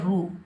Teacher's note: را حروف مستعلہ میں سے آ رہا ہے تو اس کو ہم موٹا پڑھیں گے، را کے اوپر پیش بغیر کھینچے پڑھیں گے رو۔